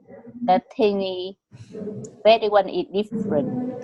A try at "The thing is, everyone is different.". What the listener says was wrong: The thing is S đầu, trời ơi sao mắc S của em hết trơn vậy?